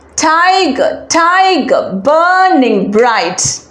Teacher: the first line begins with a stress syllable followed by an unstressed syllable stressed unstressed pattern which means it is a trochee let's count